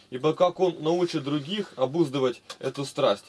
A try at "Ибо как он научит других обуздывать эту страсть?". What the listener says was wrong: Ну как он научит? Интонацию дай маленько.